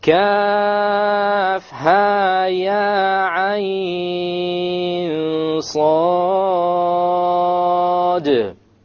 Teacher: the ha, two, ya, two, ayn, six, ayn is six. Ayn is six, with the ikhfa, with the ghunna, and then the sad has the qalqala. · there will be a qalqala where? At the end of sad, because there's a silent dal.